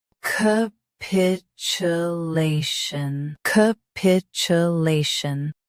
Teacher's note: Stress lay. Keep ch soft, not sh.